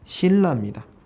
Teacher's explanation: 그러면 니은이 리을로 바뀌었습니다. 역시 마찬가지로 유음화가 되겠습니다.